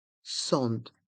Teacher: La première syllabe du mot sandwich, sand, se prononce à la française, sand, et le A et le N se prononcent en, et on prononce le D, sand.